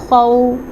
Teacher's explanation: خو مستعلیہ لیٹر ہے، اس کو پر اور موٹا پڑھا جائے گا